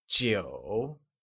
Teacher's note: Nine translates to Jiǔ and is pronounced with a falling rising tone